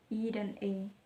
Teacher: Untuk vokal terbuka dibentuk dengan lidah dalam posisi serendah mungkin, kira-kira pada garis yang menghubungkan antara vokal A, kira-kira pada garis pembentukan berdasarkan bentuk bibir terbagi menjadi 3, yaitu vokal tidak bulat, bibir tidak bulat dan terbentang lebar